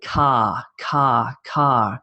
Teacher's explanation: in australia we take car car car and we sort of miss the r r sound